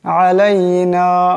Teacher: এখানে আইনাস আওয়াজটা গলা থেকে আনতে হবে।